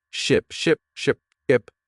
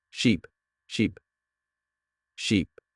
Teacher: Ship has a short I sound like in sit and sheep has a long e sound like in sea